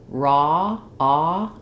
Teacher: Whereas when we say raw, ah, it's still rounded, but my jaw is more open and there's no slide. So even though there's two letters here, it's just one sound.